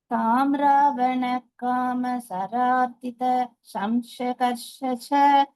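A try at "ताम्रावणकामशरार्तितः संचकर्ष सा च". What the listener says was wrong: சக்கர்ஷக்கு அப்புறம் ஏன் ச சொல்றேன் ஒரு சா இருக்கா அங்க இருக்கணும் சா ச ரெண்டும் சொல்லணும் சாச்ச ஸ்தவனேன தேவீம்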